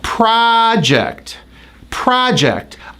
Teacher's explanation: This word can be a noun and it's stressed on the first syllable.